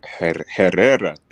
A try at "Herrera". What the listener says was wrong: Just that the H is silent. Herrera.